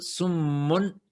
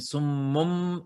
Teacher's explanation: más natural según la fonética árabe, es tener la combinación de la B con la M, porque son de los labios más cercanos